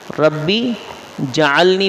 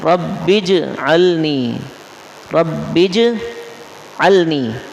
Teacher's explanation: رب بج جیم میں قلقلہ ہوگا, سکون ظاہر ہو, سکون کی وجہ سے زبر ظاہر نہ ہو · رب اجعلنی, رب اجعلنی, بج پہ آپ تھوڑا سا نا ٹھہریں اور جیم کا قلقلہ واضح کر کے اس کا سکون واضح کریں